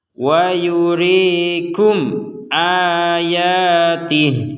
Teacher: mim sukun bertemu Hamzah dibaca dengan jelas jadi jangan sampai ada dengung ataupun samar